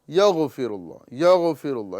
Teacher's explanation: اکثر لوگ اس غین کے اندر جو ہے قلقلہ کر دیتے ہیں، یعنی آواز کو لوٹاتے ہیں